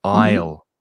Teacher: And again, notice the pronunciation with that word, because another silent letter, we do not pronounce the S. The pronunciation of aisle is exactly the same as the contraction with I will.